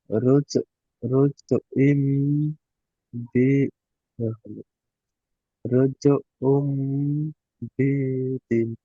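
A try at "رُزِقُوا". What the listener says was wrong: রোজ রুজ উম এমন বললেন, দেখেন এবার আপনি বানানটি জোরে জোরে করেন, দেখেন র, জিম, জাবার, রজ হয়, রুজ হয় না। হ্যাঁ, এটা হলো রজ উম বাঈদুন।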